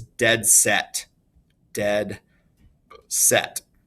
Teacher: They are 2 stressed syllables right next to each other. They're usually 1-syllable words that are next to each other. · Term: spondee